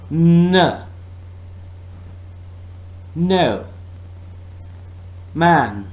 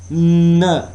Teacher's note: And it is not touching the softer part, but it is touching the harder part, hard palate. Oral passage is blocked by pressing tongue tip against the alveolar ridge.